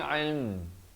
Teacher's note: Makhraj yang terakhir adalah huruf mim. Ilm turut rapat mulut ya.